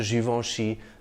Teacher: the N is not really articulated the vowel sound before it is nasalized